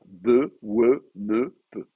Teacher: S'articule avec les deux lèvres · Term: bilabiale